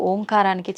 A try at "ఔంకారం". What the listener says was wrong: అది ఓంకారం కాదు, ఔంకారం. మీరు మనం పలకడమే దాన్ని తప్పు పలుకుతున్నాం. మనం మాట్లాడుతున్న ప్రతి మాటల్లో ఎక్కడో ఒక చోట అకారము ఉకారము మకారము ఉంటాయి. అకార ఉకార మకార అర్ధమాత్ర ఇది ఓంకార. అర్ధమాత్ర మకారం అన్నాడు. ప్లస్ ఆ. అర్ధమాత్ర అంటే ఔం అని ఉచ్చరించినప్పుడు అకారము ఉకారము రెండూ పలకబడి ఓంకారం దీర్ఘమవుతుంది.